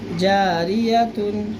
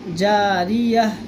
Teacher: وقف کی صورت میں گول تا ہا میں بدل جاتا ہے